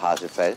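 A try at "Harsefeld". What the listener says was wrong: Hasefeld, mit R, wie Rindfleisch.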